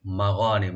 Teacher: মা ওপেন রাখবেন, গয়নটাকে ডিপ করে গেলে টানবেন, নি বলবেন, মাগানিমু, মুতে কোনো টান নাই, কাসীরাহ, কাসীরা, কাফ ওপেন রাখবেন, সি একালে টানবেন, রাটাকে ডিপ করে পড়বেন।